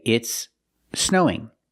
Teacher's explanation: we have two s sounds, one at the end of the first word and then another s sound at the beginning of the next word. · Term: connected speech